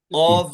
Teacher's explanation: कौफ का मखरज क्या है जबान का पिछला हिस्सा ऊपर लगेगा